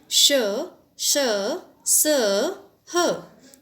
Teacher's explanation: जब हम इनका उच्चारण करते हैं तो हवा हमारे मुख से किसी न किसी प्रकार से रगड़ खाकर बाहर निकलती है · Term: ऊष्म व्यंजन